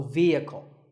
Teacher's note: next word is vehicle it's often pronounced wrongly as vehicle but the e is a long vowel and the H is silent